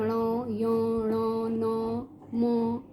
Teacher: तो नाक से हम क्या शब्द बोलते हैं, जैसे अंग, और क्या बोलते हैं ण, य, ण, न, म, इनका जो उच्चारण स्थान है वो क्या है, नासिक्य है। नाक से इनकी आवाज़ निकलती है।